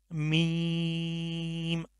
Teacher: یہ جو میم ہے یہ ہونٹوں کے خشک حصے سے ادا ہوتا ہے